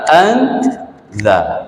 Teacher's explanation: Ikhfa maksudnya kita sembunyikan nun mati itu, kita sembunyikan, kita samar-samarkan bunyi nun tu ke dalam huruf ikhfa. An za, dalam huruf za tu kita sembunyikan nun.